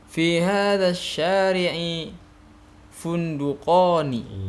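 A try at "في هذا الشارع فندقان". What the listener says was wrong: Iya, bagus ya.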